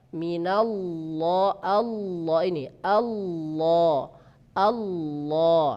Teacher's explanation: lam yang tebal itu ya hanya dimiliki oleh lafadz Allah, lafadz jalalah. Ya, apabila didahului oleh harakat fathah dan dhammah. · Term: lam tebal